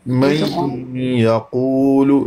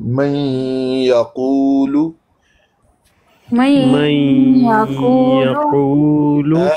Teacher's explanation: نون کی آواز باقی رہے گی تو ادغام مع الغنہ، ادغام ناقص، مکمل ادغام نہیں ہو رہا کیونکہ نون کی آواز باقی رہ رہی ہے